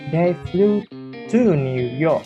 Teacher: The nucleus is on the preposition to, which is not usually stressed. Speaker want to emphasize the direction.